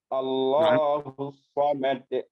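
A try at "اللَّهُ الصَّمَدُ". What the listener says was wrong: Allahu samad. Samad. Nggak panjang ya. Samad gitu aja.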